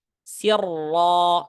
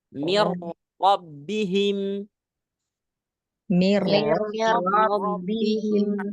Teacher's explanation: Tanpa melihat huruf sebelumnya. Ra tasydid fathah, tebal. Ra tasydid dhamma, tebal. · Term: tafkhim tebal